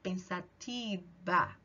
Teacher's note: em espanhol, esse V tem um som de quase B, então eu falo pensativa.